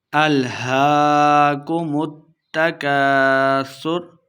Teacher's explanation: کاف الف زبر کا الف مدہ ہو رہا ہے، دو حرکات لمبا کرنا ہے